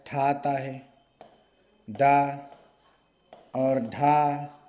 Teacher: ये सभी उच्चारण स्थान जो है मूर्धा से होते हैं।